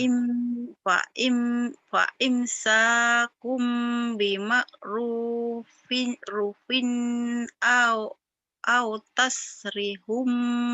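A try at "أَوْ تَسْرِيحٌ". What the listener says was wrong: Panjang Au tasrihum panjang. Kan ada mad to be ini. tasrihum.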